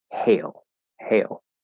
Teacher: they're both l colored a